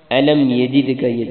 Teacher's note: دال پر کلکلا کرنا ہے